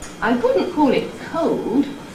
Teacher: Just a very gradual fall. It's not a big steep fall like you get on a nucleus. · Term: falling head